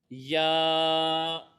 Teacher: زبان کے درمیان اور تالو کے درمیان سے ادا ہوتا ہے